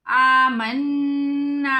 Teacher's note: نون کے اوپر شد ہے، غنہ کریں گے۔